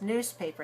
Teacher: in the word newspaper, the first syllable is stressed. Newspaper, the stress is on the first syllable, and the other ones are not stressed.